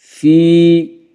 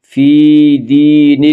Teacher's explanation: یدخلون، یدخلون فی، یا مدہ، دین میں بھی یا مدہ، یا مدہ کو ایک الف کے برابر کھینچ کر پڑھیں گے